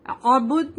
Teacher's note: تو ہم دال کو قلقلہ کے ساتھ پڑھیں گے